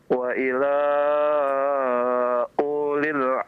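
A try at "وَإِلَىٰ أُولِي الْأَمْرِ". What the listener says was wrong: Masih panjang lagi. Berarti antum masih menganggap itu ada ya. Tutup pakai tangan.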